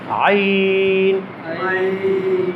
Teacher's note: আইন আমি কিভাবে উচ্চারণ করছি হরফটি? আমি গলার ঠিক ওই মাঝখানটা চাপ দিচ্ছি।